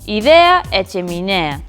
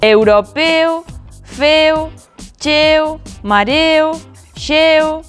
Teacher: As palabras terminadas en ea e eo adoitan ser con e pechado.